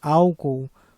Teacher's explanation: na verdade ela é uma proparoxitona porque ela possui três sílabas e a sílaba tônica é a primeira